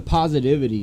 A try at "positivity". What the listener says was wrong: There's a T in that word.